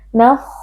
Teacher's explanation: huruf kha, huruf tafkhim dibaca dengan tebal